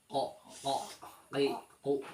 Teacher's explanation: banyak ya yang pertama ada huruf qof nah huruf qf itu keluarnya dari pangkal lidah dekat dengan kerongkongan ah berarti pangkal lidah itu ujung lidah yang dalam dekat kerongkongan